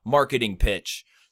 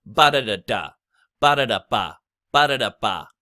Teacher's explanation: the two emphases on these syllables are the mark and pitch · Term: stressed syllables